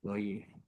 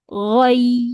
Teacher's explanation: dia pendek tapi dia kena tahan pada makhraj iya